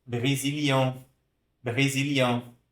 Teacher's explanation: a gente chama de vogal nasal, né? Pronuncia aqui com nariz.